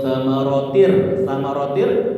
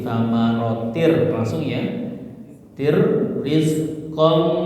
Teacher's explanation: melebur ke huruf di depannya tanpa gunah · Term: idgham bila gunah